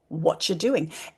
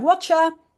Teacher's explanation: So t plus r or t plus y can often be heard as ch. · And then the T, the T sound is followed by a Y sound, and that becomes a Ch. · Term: co-articulation